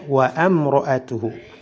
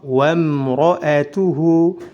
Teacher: Sebelum mim sukun ada hamzah wasal yang berada di tengah kata, maka hamzah ini tidak dibaca, tidak boleh wa amra'atuhu.